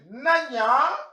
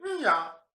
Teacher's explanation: par élidation, au cours des générations, le mot a été élidé dans la prononciation et au lieu de dire na-nya, on n'entend plus le A, on dit nya